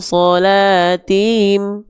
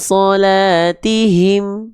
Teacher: karena dia punya sifat hams dan rokhwah. Mengalir nafas, hams. Mengalir suara, rokhwah.